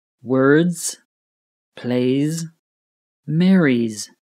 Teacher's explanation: The S sounds like a zed or z, which is a buzzing z sound.